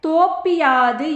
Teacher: இறுதி எழுத்து பூவானது பி என்று ஒலிக்கிறது. அதுவும் முழுமையாக ஒரு மாத்திரை அளவில் ஒலிக்காமல் அரை மாத்திரை அளவாக குறைந்து ஒலிக்கிறது. இவ்வாறு ஒரு மாத்திரை அளவிலிருந்து அரை மாத்திரை அளவாக குறுகி ஒலிக்கும் இகரம் குற்றியலிகரம் எனப்படும்.